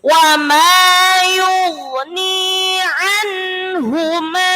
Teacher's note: Hu-nya pendek, ma-nya yang panjang.